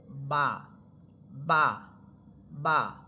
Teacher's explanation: বা হরফ এটা দুই ঠোঁটের ভিজা অংশ থেকে উচ্চারিত হবে, অর্থাৎ দুই ঠোঁট মিলানোর পর দুই ঠোঁট স্বাভাবিকভাবে মিলালে দুই ঠোঁটের মাঝখানে দেখেন একটা ভিজা অংশ থাকে, এই অংশটা থেকেই বা হরফটা উচ্চারিত হয়।